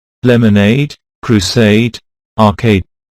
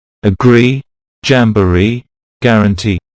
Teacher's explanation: have the primary stress actually placed on the suffix